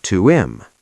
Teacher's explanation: We often drop the h in him.